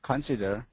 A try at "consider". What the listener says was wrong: Consider. The accent goes on the second. Consider.